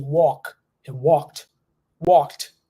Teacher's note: see that we barely pronounce the the letter L over there we don't pronounce the L that much in this word